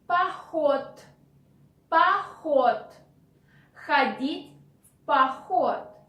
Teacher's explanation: D at the end of the word we pronounce like T in spoken Russian language.